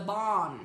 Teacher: You know there's no R in the word born. It's the bon.